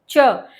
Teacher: जो च वर्ग है आपका पूरा, च वर्ग यानी च छ ज ज य जो भी है, तो इसमें जो च है जब आप उसको साउंड करेंगे, च बोल के देखिएगा, च, जीभ आपको ये एहसास होगा, आपकी जीभ आगे और पीछे दोनों तरफ से तो स्टेबल है, लेकिन बीच का जीभ का कुछ हिस्सा ऊपर उठ रहा है और कहीं टच कर रहा है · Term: तालु